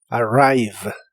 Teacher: La R de inglés es como la R de español, pero mucho más suave. Y la V de inglés es labiodental y vibrante. Y la E del final de las palabras casi nunca se pronuncia, como en este caso.